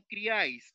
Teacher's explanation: En criáis, la mayor fuerza de voz está en la A. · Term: triptongo